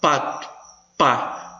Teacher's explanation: olha esse P, bilabial